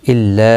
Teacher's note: مد منفصل ہے، 3 الف کی مقدار کے برابر کھینچ کر پڑھیں گے